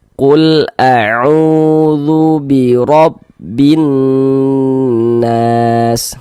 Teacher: Di sana ada waw sukun, sebelum waw sukun sebelah sininya ada huruf yang memiliki harokat dhammah nih, maka huruf yang memiliki harokat dhammahnya dibaca panjang, sehingga u dibaca panjang